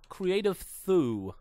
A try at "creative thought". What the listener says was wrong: You read it as thoo.